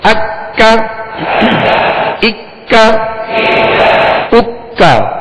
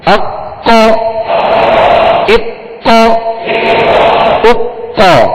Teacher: ڈنڈی والا کاف ہے، لہذا اس کو باریک پڑھنا ہے، اور دو نقطے والے قاف کو پر یعنی موٹا پڑھنا ہے